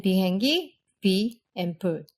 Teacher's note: It's unvoiced, and it's slightly less aspirated than its English counterpart. In IPA, you'll see it marked as a lowercase p. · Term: lax P